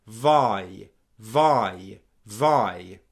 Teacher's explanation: Just as with the O diphthong that we looked at a moment ago, make sure that I is starting low enough and coming up high enough